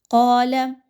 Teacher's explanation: قاف موٹا حرف ہے، موٹا کر کے اس کو پڑھیے، باریک نہیں رکھنا